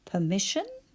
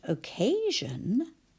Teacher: The sound is zh, not sh.